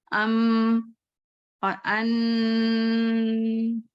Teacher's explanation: मुंह से तो नहीं आवाज आ रही है, ये नाक से आ रही है ना , जैसे नाक में पकड़ लेती हूँ, अन कहूंगी उसके बाद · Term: गुन्ने